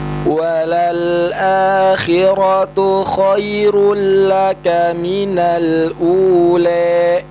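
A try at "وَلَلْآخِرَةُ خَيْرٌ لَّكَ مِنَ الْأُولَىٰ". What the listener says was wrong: Jelaskan, kurang jelas tuh e-nya.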